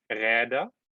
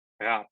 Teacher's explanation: an intervocalically voiced stop, like in Räder, becomes voiceless in syllable final position, Rad